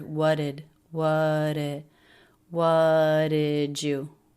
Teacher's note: pronounce that by dropping the T and just linking into the next word